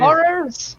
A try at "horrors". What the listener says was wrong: You got to put more emphasis on the R, the ers.